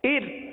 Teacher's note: اس را کو، ار والی را کو باریک پڑھیں گے، کیونکہ را ساکن سے پہلے زیر ہے، لہذا را کو باریک پڑھیں گے.